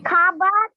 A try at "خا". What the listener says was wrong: خا. خوابا نہیں, خوابا نہیں, خوابا. خا کو خا پڑھنا, کھا نہیں پڑھنا.